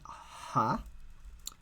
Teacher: the sort of aspirate H is a pharyngeal fricative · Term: voiceless pharyngeal fricative